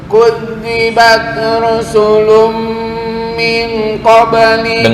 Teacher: qalqalahnya langsung ya karena sugra, karena qalqalah kecil